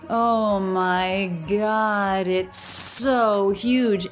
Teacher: And then so and huge both have stress. And I want to point out we have an ending S, a beginning S. Those link with a single S sound. It's so, no break, all connected.